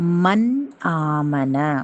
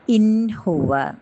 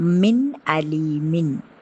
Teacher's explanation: நூனே ஷாக்கின் அல்லது தன்வீனுக்கு பின்னாடி இல்ஹாருடைய எழுத்துக்கள் வந்தது அப்படின்னா அந்த நூனே, அந்த சுக்குன் பெற்ற நூனை அந்த தன்வீனுடைய நூனை வந்து தெளிவாக சொல்லணும். இது இல்ஹாருடைய சட்டம்.